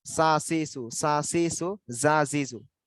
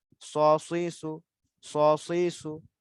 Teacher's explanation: জা সিন উচ্চারণের সময় মুখটা সমান থাকে, সা সিসু, সা সিসু, জা জিজু। মুখ কিন্তু গোল হয় না, কিন্তু সদের উচ্চারণের সময় গোল হয়।